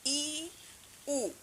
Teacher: জিভ সবচেয়ে উপরের দিকে থাকে। তোমরা যখন উচ্চারণ করো, যখন ই উ দেখবা জিভ হচ্ছে সবচেয়ে উপরের দিকে আছে। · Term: উচ্চ স্বরধ্বনি